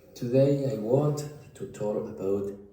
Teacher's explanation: The k disappeared almost entirely.